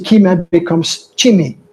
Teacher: ch is the tsitakismos, the palatalization, and the e becomes I